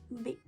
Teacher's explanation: In this sound, both of your lips touch and open to generate an explosion of air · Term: bilabial sound